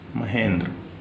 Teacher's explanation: और इसमें जो संधि है वो गुण संधि है, हा महा, नहीं महा प्लस इंद्र है, तो इसमें आ और ए, आ और ई मिलकर ए बन जाएंगे, आ और ई मिलकर ए बन जाएंगे। तो महा का आ और इंद्र का ई मिलकर यहां पर ए बन गए हैं। आ प्लस ई, महेंद्र।